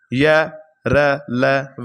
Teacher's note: व का जो आपका उच्चारण होगा वो होगा दंत और ओठ की सहायता से तो दोस्तों इसको क्या कहा जाएगा दंतोष् कहा जाएगा।